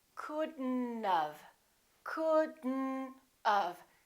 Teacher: we pronounce the D and then we connect the D next to the N and then the O disappears but the T also disappears